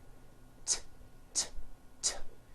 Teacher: It's unvoiced. Your vocal cords are not vibrating.